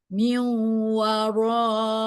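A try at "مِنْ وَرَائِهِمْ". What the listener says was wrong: kurang dengung. Belum masuk ini ke hidung ini. Lagi, masukin ke hidung coba.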